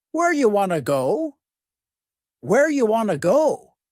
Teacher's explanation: You becomes ya and want to becomes wanna.